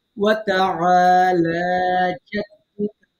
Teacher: এরকম হয়ে যায় এরকম না হয় আইন খেয়াল করতে হবে হ্যাঁ গলা চেপে কণ্ঠনালীর মাঝখান দিয়ে সুন্দর করে আইন উচ্চারণ করতে হবে